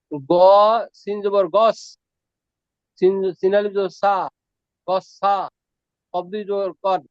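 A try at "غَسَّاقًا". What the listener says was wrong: এখানে একটু ভুল আছে, এখানে গাসাকান এই তাসদিদ হয়ে গেছে, ভুল। হ্যাঁ, তাসদিদ ভুল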